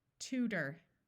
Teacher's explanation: notice that the o r when not accented sounds more like er